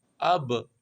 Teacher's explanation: الف با زبر اب کہہ دو گے تو یہاں پہ پے کی آواز آئے گی، یہ دونوں ہونٹ ملیں گے تو پے کی آواز آ گئی۔